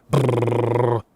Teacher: Can you putter your lips like if you're cold? That's a bilabial trill phonetically speaking.